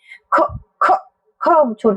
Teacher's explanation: कितना भी छोटा करके बोलने पर हम अ की आवाज लगाए बिना नहीं बोल सकते हैं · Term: व्यंजन